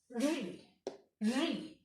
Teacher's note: री जो है वह मूर्धा से बोला जाता है